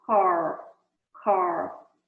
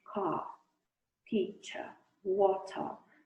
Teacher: no inglês britânico, por exemplo, a palavra car, ela nem tem o símbolo de R na transcrição fonética, porque eles falam praticamente car, teacher, water.